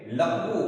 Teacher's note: શબ્દના અંતે આવેલો અનુનાસિક નું ઉચ્ચારણ કરતા નથી દાખલા તરીકે લખવું વુ ઉપર મીંડુ છે પણ એ કરતા નથી